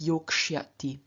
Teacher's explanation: After the k, sya becomes shya due to ruki